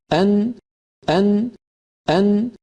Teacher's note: यह दोनों चीजें मिलकर नून को अदा कर रही होती हैं एक तो जुबान का इब्तिदा ऊपरी हिस्सा ऊपर वाले इब्तिदा तालू को लगता है और दूसरा नाक से आवाज खारिज होती है · जुबान लगती है लिहाजा नून इस तरह अदा होती है कि जुबान का इब्तिदा ऊपर वाला हिस्सा अपने बिल मुकाबिल मसूड़ों को जो लाम के मखर से थोड़ा सा नीचे है लगना चाहिए और साथ नाक से भी आवाज गुजरे यह दोनों चीजें मिलकर नून को तकी ल देते हैं और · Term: नून का मखर